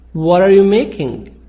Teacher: T, soft D, between two vowels.